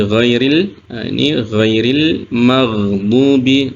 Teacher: ghairil magdubi nah ini huruf ginah ini bukan huruf Qalqalah ya tidak boleh memantul juga gain ini mengalir